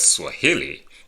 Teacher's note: stressed on the penultimate which is the second to the last syllable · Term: syllable stress